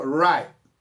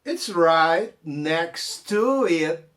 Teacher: O right não falou o T, o next não falou o T, e o T também ficou travado.